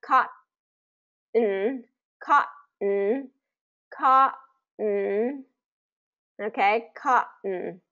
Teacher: So a similar thing is happening here is where we're hitting the T, we're going to come up and our mouth's going to get in position for the T sound, like cotton, cotton, cotton, okay, cotton. We're going to kind of hit with the T and then we're going to come in with the N.